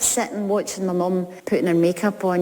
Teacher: In Scottish pronunciation, the ing ending in putting and sitting is not clearly pronounced as ing. She said in, and the T sound is usually sharp, not soft.